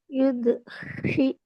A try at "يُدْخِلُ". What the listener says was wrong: யூது வரல, தால்ட சவுண்ட் வரல. யூது. யூது.